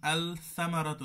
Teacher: হরুফ তখন এই লাম আর পড়া যায় না পড়তে হয় না লামকে বিলুপ্ত করে দিয়ে আগের শব্দের সাথে ইদগাম করে পড়তে হয় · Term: লামুশামসিয়া